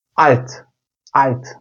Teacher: Almanca'da L harfi yüksek Almanca'da her zaman ince L ile telaffuz edilir.